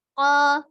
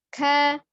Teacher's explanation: kof itu dibaca dengan jelas ya, jahar, kemudian kafnya al-hams, ada samar ya, ada aliran nafas yang mengalir